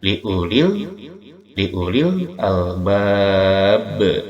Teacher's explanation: Ini ya, ini masuk pada huruf qalqalah. Jikalau diwakofkan maka dia mantulnya lebih tajam, disebut qalqalah kubra.